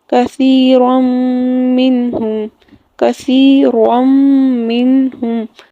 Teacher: نون تنوین کو میم کے ساتھ مدغم کر کے پڑھا